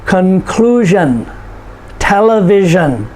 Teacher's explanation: end in s-i-o-n and t-i-o-n shun s-i-o-n conclusion television okay so notice where the emphasis is conclusion next to the last syllable